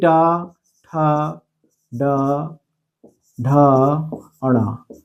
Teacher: जो टा वर्ग होता है इसमें जीव मुड़ती है मुड़ने को मूर्धा कहा जाता है इतना समझ लो अी इसको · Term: मूर्धा वर्ग